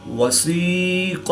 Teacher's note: یا ساکن سے پہلے سین کے نیچے زیر ہے تو یا مدہ ہوگا، ایک الف یعنی 2 حرکات کے برابر کھینچ کر پڑھیں گے